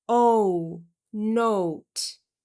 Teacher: Again, another diphthong, o to u